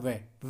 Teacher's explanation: ऊपर के दांत तथा निचला होठ उससे बोला जाता है